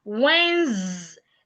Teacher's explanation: The D is silent. The E is silent. The S changes to a zed. Wednesday Z as in zip.